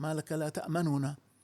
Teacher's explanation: وفيها قراءة الاختلاس مع فك الإدغام